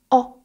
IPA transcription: ɒ